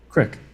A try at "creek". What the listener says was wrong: I swear, crick. There's no I. There's no I in there.